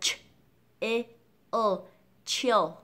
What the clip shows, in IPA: 't∫ɪld